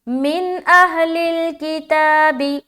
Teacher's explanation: آگے چلے، من اہل الکتاب، اس کے بعد یہاں پر دیکھیں من جب کریں گے نا تو یہاں پر پھر نون ساکن آ گیا اور نون ساکن کے بعد حمزہ آ گیا، تو یہاں پر اظہار کا قاعدہ کریں گے، یعنی کہ سمپل پڑھ کے نکلنا ہے، نون کی آواز ظاہر ہو جائے گی